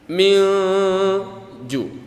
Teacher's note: Ada huruf nun mati bertemu huruf jim. Ya, maka hukumnya ikhfa, dibaca dengung.